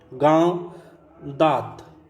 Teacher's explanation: अनुनासिक वर्ण के उच्चारण में नाक से बहुत कम सांस निकलती है और मुंह से अधिक